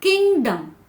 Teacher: In the word किंगडम the syllable किंग is stressed. जैसे हम बोलते हैं ना किंगडम, तो किंग के ऊपर ज्यादा स्ट्रेस किया गया है.